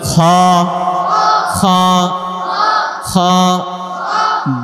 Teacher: খ খ, হলকের শেষ হইতে 3 নাম্বার মাখরাজ